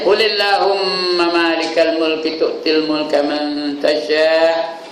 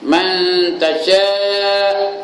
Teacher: Sya' tu berapa panjang? 5 harakat, bukan 6, 5 ya. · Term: Mad wajib muttasil